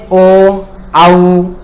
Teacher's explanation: ओ और औ जो है, ओ और औ है, ये हमारे अच हैं। इनका जब हम उच्चारण स्थान करते हैं तो आवाज हमारी कंठ से भी निकलती है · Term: कंठोष्ठम